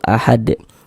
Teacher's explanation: karena huruf dal ini sukun, maka berarti dia mantul ahad karena termasuk salah satu daripada lima huruf qalqalah.